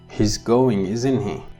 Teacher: when you ask a question your intonation is rising your pitch is rising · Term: rising intonation